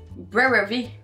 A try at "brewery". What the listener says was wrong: Oui, c'est brewery.